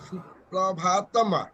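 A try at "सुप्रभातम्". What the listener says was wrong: Tama nahi. It is not tama. It is not tama. It is tam only. But look at bha.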